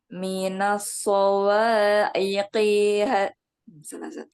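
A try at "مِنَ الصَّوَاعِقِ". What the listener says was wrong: Nah, apa tasdidnya kurang mengalir, Bu. Minas agak ngalir dulu.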